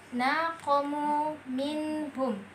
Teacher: nun mati bertemu dengan ha maka dibaca dengan jelas tanpa didengungkan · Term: izhar